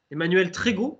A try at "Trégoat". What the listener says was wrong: Trégo hâte. Voilà, si on dit le A, c'est un nom breton et on prononce A.